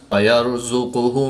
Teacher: را ساکن سے پہلے یا پر زبر ہے تو را کو پوری یعنی موٹا پڑھیں گے